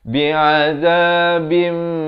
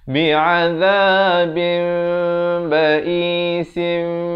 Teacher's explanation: Bunyi nun itu, bin itu, ditukarkan kepada bunyi mim, jadi bim. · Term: hukum iqlab